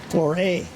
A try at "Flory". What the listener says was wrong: No A. It's R-Y. Flory.